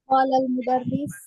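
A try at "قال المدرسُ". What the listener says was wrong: Qala al-mudarrisu. Harokat akhir jangan ditinggal.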